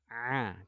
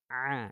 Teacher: kalau di huruf Ain ini menyentuhnya di katup epiklotis